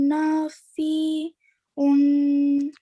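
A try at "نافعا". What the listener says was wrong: Okay, at the end it's nafi'a.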